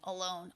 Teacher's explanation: his voice gets a little strange towards the end alone oh it's sort of got this quality like he's lifting something heavy in it